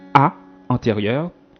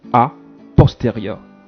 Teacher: La différence, c'est la langue qui se masse en avant lors de la réalisation du A antérieur et la langue se masse en arrière lors de la réalisation du A postérieur